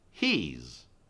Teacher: Now, the confusing thing is oftentimes we contract these two words and we say he's, H-E apostrophe S, in which case it's the E sound. It's just the E sound because we've taken out the short I sound.